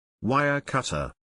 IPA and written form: ˈwaɪər ˌkʌt.ər (Wire Cutter)